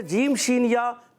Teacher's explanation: जीम शीन या जब भी ये अदा होते हैं ज़बान के दरमियान, तालु के दरमियान से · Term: हुर्फ़े शजरिया